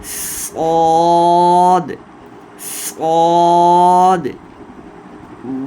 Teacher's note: منہ کو بھر کے نکالنا ہے، پر کر کے، ٹھیک ہے؟ اور سیٹی بھی ساتھ لگانی ہے